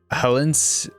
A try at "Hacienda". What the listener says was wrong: There's no L.